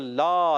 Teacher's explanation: لام الف زبر لا، اس کو ایک الف کھینچنا ہے، ضروری ہے